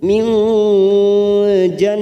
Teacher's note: nun sukun bertemu jim, ikfa hakiki kita samarkan 3 ketuk